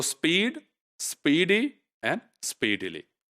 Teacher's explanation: one syllable right then if you compare this with speedy although it's the same vowel in the first syllable of speedy but it is shorter then the vowel the same evil which is found in speed